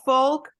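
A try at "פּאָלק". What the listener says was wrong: No, polk. It's not folk, it's polk.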